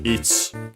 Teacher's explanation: Yeah, technically would be the accent on the chi, so on the last syllable. Sometimes you might hear it as ich, because of the rule of I and U barely heard if at all. When they are at the end of a word, but technically better at the end, usually heard as the end of sentences, before a pause.